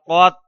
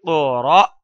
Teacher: حمزہ کے اوپر جزم آ جائے تو اس کو جھٹکے کے ساتھ ادا کریں گے۔